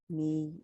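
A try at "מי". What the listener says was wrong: No, read the vowels at the end. You gave up at the end.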